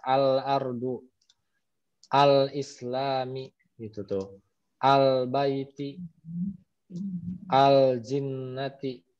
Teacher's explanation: alif lam Qomariyah itu adalah lamnya sukun gitu ya maka dibaca jelas